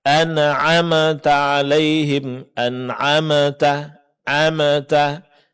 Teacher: Kemudian terakhir, yang ini juga masyhur kesalahannya adalah mengucapkan huruf mim dengan dikolkolahkan ketika dia berbaris sukun